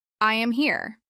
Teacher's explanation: try saying this with a falling tone to make it sound clear and confident